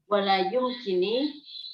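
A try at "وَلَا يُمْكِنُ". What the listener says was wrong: Yumkinu, bukan yumkin. Wala yumkinu. Di dhammah terakhirnya.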